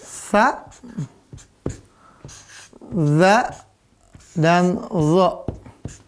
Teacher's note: ujung lidah bertemu dengan apa ujung gigi seri atas